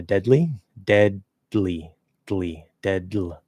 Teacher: So, if you want to go from D to L, literally all you have to do, you don't even have to release the D. You just have to pull the sides in.